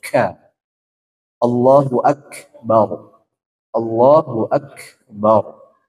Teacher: pangkal lidah bertemu dengan langit-langit yang keras ini maka dia bergesek